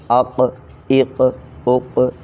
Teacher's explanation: کے بعد زبان والے حروف، ان میں سب سے پہلے قاف، تو زبان کی جڑ نرم حصے سے، تو اس جگہ پر آواز ہل رہی ہے